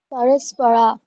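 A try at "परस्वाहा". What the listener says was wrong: এখানে র নেই কিন্তু, সরাহা নয়, পর স্বাহা, স্বাহা বলুন, পরস্বাহা।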